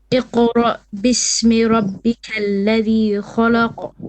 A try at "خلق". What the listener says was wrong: Again, you have to do kha la. La is flat. خلق خلق خلق.